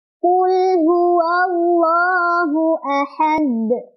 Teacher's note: lamnya itu lam sukun dan tidak boleh memantul